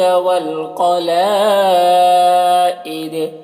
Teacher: قاف کو پر پڑھیں گے، حروف مستعلیہ میں سے ہے، لام میں مد متصل ہے، اسے 3-4 الف کے برابر کھینچیں گے۔